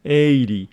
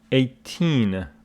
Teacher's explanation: this one is pronounced 18 but this one is pronounced 80 the stress of this one falls on the first syllable 80 this one on the second syllable 18